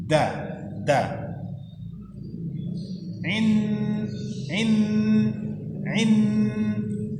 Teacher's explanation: Ketika melafazkan nunnya, lidah kita sudah di pangkal gigi seri atas. · Jadi ketika membaca nunnya kita sudah pada posisi makhraj huruf dal. Makhraj huruf dal itu ujung lidah dibawa ke pangkal gusi, pangkal gigi atas. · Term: ikhfa